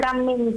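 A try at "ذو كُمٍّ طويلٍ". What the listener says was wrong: Kam min wala kum min? La, kum, al-kum. Al-kaf madmumah.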